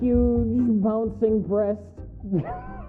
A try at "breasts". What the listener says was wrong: Why are you saying it's singular? Did everybody hear breast?